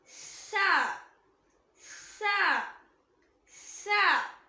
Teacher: மேற்பற்களுக்கும் கீழ்பற்களுக்கும் நடுவுல நாக்கோட நுனி வெளியே வரும்போது உச்சரிக்கக்கூடிய லெட்டர். அதாவது பல்ல விட்டு லைட்டா வெளியே வரணும்.